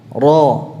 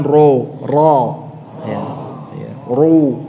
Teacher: ini ini sama dengan lam tadi ya bukan dengan bibirnya jadi bibirnya tidak usah mecucu ya cukup diangkat pangkal lidah nya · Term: tebal